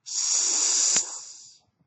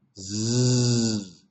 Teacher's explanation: the S sound is a voiceless sound that means your vocal cords inside your throat are not moving s the z sound Z you can feel something's moving or · inside your throat are not moving s the z sound Z you can feel something's moving or vibrating inside your throat we call that a voiced sound